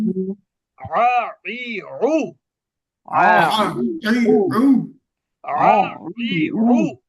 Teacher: এখন এটা যদি গলার মধ্যে না আনেন তাহলে কি হয়ে যাবে জানেন? হামজা হয়ে যাবে